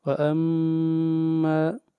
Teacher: یہ الف مدہ ہے، جب الف سے پہلے زبر ہو تو یہ الف مدہ ہوتا ہے، یہاں پر مد اصلی ہوگی، اس مد کو ایک الف کے برابر کھینچ کر پڑھیں گے